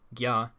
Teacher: gya is a palatalized ga